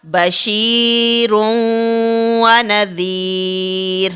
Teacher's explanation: ہم اس تنوین کو واو کے ساتھ ملا کر پڑھ رہے ہیں. تو یہاں پر واو کو ہم ادغام کے ساتھ ادا کر رہے ہیں.